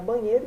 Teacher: o acento tônico no caso da palavra banheiro está na penúltima sílaba